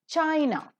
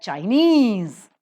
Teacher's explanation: China the first syllable is accented but Chinese the second syllable is accented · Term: stress shifts